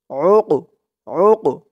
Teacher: কফটা কলকলার হরফ, ধাক্কা দিয়ে পড়তে হবে